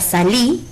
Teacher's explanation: La palabra salí es una palabra de 2 sílabas que tiene su sílaba tónica en la última sílaba, por lo que es una palabra aguda y al terminar en una vocal lleva tilde gráfica.